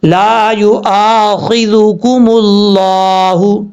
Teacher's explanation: آگے ہے خوا زیر خی، ذال پہ ذو، کاف پیش کو، میم لام پیش مل، لام کھڑا زبر لا، ہا پیش ہو، ملہ. میم کے اوپر کیونکہ پیش تھا اس لیے لفظ اللہ سے پہلے پیش ہے، لفظ اللہ کو پر پڑھیں گے ایک الف کی مقدار